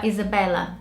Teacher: there's not that much focus on the L. You don't roll your tongue as much to say it the Brazilian way.